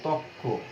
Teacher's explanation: তাহলে এখানে আমরা দেখছি একটি র লুপ্ত হয়ে গেল, এবং এটার আবার একটা মজার ব্যাপার কি, লুপ্ত হয়ে গিয়ে যে পরবর্তী ধ্বনিটি থাকে সেটা কিন্তু দ্বিত্ব হবে সবসময়। র লুপ্ত হয়ে র এর ঠিক পরবর্তী ধ্বনিটি দ্বিত্ব হবে। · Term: রকার লোপ